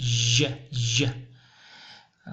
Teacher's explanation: Дальше звук Ж после Ч. Он похож на Ч, но Ж вы язык не смыкаете. И вот должны оставить какую-то щель. Ж. 3 согласных звука.